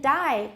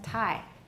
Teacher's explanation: we do have a little burst when the stop is released but we don't have aspirations so it's a very tiny burst